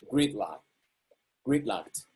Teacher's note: stressed on the first syllable so is gonna sound a little higher in pitch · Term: main stress